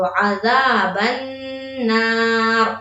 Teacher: किस चीज का गुन्ना, नून मुशद्दद का गुन्ना। तो यहाँ पर गुन्ना करेंगे किस तरह, थोड़ी देर आवाज को नाक में रोकेंगे